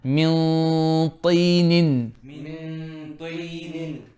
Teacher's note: Now min طي, so ta is heavy, so Ikhfa will be heavy.